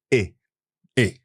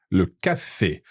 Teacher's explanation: and it's always pronounced e e as in Cafe CFE so that's a very open e sound it's a little like the a that we have in English in play or snake or game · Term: E acute